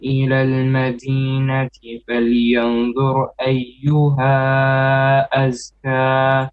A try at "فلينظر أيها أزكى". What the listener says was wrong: Okay, wait. إخفاء on فلينظر. It's a heavy إخفاء. So فلينظر أيها أزكى. So إخفاء, we have two ways of making it. One is a light إخفاء or flat إخفاء. The other one is a heavy one. Because dha is a heavy letter, so our ikhfa will also be heavy. So we don't say falyanzur, that is not correct.